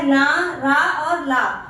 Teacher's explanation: जिन वर्णों का उच्चारण जीभ के द्वारा ऊपरी मसूड़ों को स्पर्श करे वत्सर व्यंजन कहलाता है। यानी कि आप जब बोलते हैं तो आपका जो जीभ है वो मसूड़ों को स्पर्श करता है। · आपका जो जीभ है वो मसूड़ों का स्पर्श करता है, उसको हम बोलते हैं वत्सर्य व्यंजन या वतर्स व्यंजन।